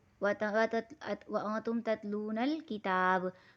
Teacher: با کو وقف کی صورت میں قلقلہ کر کے پڑھیں گے